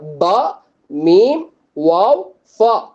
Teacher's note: இது நாலு எழுத்துமே வந்துட்டு இரண்டு உதடுகள்ல இருந்து உச்சரிக்கக்கூடிய எழுத்துக்கள்